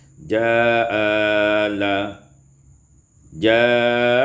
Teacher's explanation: isqatul hamzatul ula, dibuang hamzah yang pertama maka menjadi ja'ala, ja'ala, yakni qasar dan tawassut.